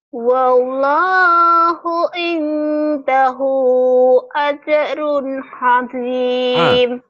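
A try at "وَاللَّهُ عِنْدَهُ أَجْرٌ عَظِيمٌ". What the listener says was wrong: Ah, bukan ha, ah, 'azim. Wallahu 'indahu ajrun 'azim.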